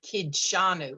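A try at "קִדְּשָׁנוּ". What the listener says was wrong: yes there should be a short vowel on with the dalit kidashanu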